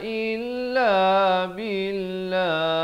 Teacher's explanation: Waqaf kepada lafz jalalah jangan tebal, jangan dibacakan dengan satu harakat, mestilah dua harakat. Billah, jangan tebal pula billah, itu salah. Di sini kena baca nipis